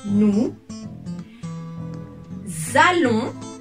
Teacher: So I'm doing the liaison here as consonant and then we have a vowel.